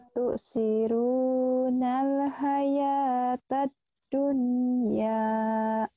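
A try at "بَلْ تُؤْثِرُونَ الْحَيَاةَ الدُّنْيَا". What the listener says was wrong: jangan ditahan. Baltu, baltu sirunal hayatad, hayatad dunya. Tad nyamber ya, ayo nyamber. bal to neken ba, kayak neken ke hamzah nyamber.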